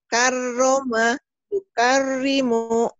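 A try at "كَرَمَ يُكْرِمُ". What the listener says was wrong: Jangan panjang. Karoma yukarimu. Karoma yukarimu. Jangan karoma, jangan. Pendek ya.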